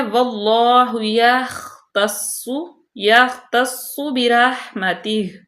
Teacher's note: خوا کو پر پڑھیں گے، صاد کو بھی پر، اور صاد مشدد ہے سختی سے ، برحمتہ، با باریک، را پر، ہا کا مخرج واضح کریں،